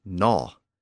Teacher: that awkward G sound at the front also disappeared, and it became simply gnaw.